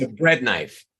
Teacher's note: all of these knives are pronounced emphasizing or stressing the first word because they're objects